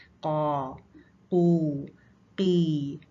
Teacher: तो काफ की अदायगी में वो जो हमने किसी भी हर्फ को मोटा करने के लिए सारे स्टेप्स पढ़े थे वो सारे के सारे होंगे, यानी कि हल्क तंग हो जाएगा और ज़बान दरमियान से नीचे जाएगी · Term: मोटा लेटर